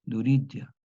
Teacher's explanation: Pero aquí, en el latín vulgar, surgió otro fenómeno que ya veremos después, la segunda etapa, que aparece una yod semiconsonante